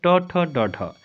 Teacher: ट ठ ड ढ ये जो होते हैं आपके मुर्धा व्यंजन होते हैं